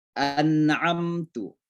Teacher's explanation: ada mim mati ketemu ta, itu namanya izhar syafawi. Jadi penyebutan mimnya jelas. An'amtu. Jangan dilagu-lagukan.